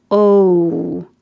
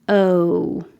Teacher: you can start with your lips rounded, O, or not rounded, O.